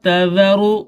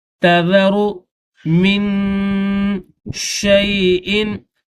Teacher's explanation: ما تذر، تا کے بعد یہ ذال ہے اور ذال کو پڑھتے وقت زبان کو تھوڑا سا باہر نکالیں گے